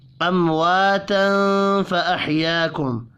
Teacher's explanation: امواتا فاحیاکم، میم ساکن کے بعد واو ہے، اظہار شفی ہوگا، غنہ نہیں کرنا، الف مدہ کو 1 الف کے برابر کھینچ کر پڑھیں گے۔ تنوین کے بعد فا ہے، اخفاء حقیقی ہوگا، فاحیاکم، الف مدہ کو 1 الف کے برابر کھینچ کر پڑھنا ہے، وقف کرنے کی صورت میں میم ساکن رہے گا، ملا کر پڑھیں گے تو غنہ نہیں، اظہار شفی ہوگا۔